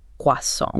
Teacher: He pronounces it with the perfect original French inflection. You know, the soft N, the stress at the very end